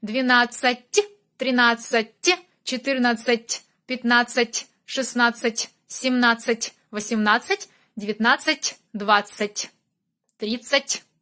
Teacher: You should pay attention to end of these words. You need to use soft consonant. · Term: Soft t sound